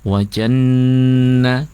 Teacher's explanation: gunahnya nun tasydid itu gunah jangan buru-buru ya, didengungkan atau ditahan yang lama. Wajanna durasi lamanya dengungnya sama dengan ketika dengungnya ikhfa ya, gunah.